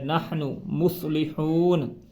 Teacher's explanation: قالوا انما نحن مصلحون، اب اس کو نہ نہیں کرنا، یہ ہا ہے، ہا ہے جو حلق کے اوپر والے حصے سے ادا ہوتا ہے